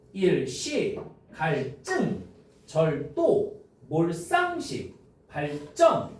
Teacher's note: 한자어에서 리을 받침 뒤에 드스즈는 된 소리로 발음한대.